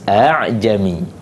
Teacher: Hafs dibaca tashil, iaitu antara hamzah dan alif